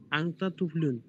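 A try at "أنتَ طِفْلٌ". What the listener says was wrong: তিফলুন, তুফলুন কি? জেরের জায়গায় তেজ দিলে।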